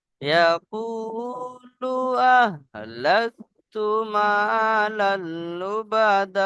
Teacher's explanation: মা লাল লুবাদা, এখানে সেই কায়দা আরেকবার আসছে দেখেন, তানমিনের পরে লাম, এখানে এসছে নুন সাকিনের পরে লাম, তাই ইদগামে তাম বিনা গুনায় পড়তে হয়েছে